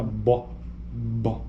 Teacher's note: então é uma consoante oclusiva bilabial